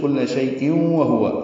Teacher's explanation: ادغام کریں گے، واو پر تشدید لائیں گے اور غنہ ہوگا